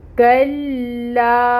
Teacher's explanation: کاف کو لام کے ساتھ ملائیں گے، ٹائٹلی جوائن کرنا ہے، ٹائم ٹیکنگ ہوگا، اور الف سے پہلے فتح کی حرکت ہے تو اس لا کو 2 حرکت کے برابر لمبا کرنا ہے۔ کلا 2 لام ہے، کاف کے ساتھ 1 لام کو ملائیں گے، پھر لام زبر الف لا پڑھیں گے۔